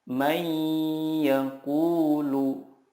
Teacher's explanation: Cara membacanya adalah meleburkan nun sukun ke huruf berikutnya dan disertai gunnah yang dipanjangkan 2-3 harokat. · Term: idgham bila gunnah